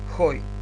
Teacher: ој дифтонгот е напишан горе со спиритус аспер, спиритусот го читаме како Х